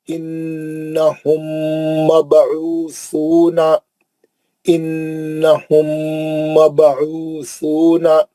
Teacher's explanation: انہم نون کا غنہ ہے, پہلے نون مشدد آیا تو نون کا غنہ ہوتا · اس کے بعد میم ساکن کا ادغام شفوی حرف میم ہے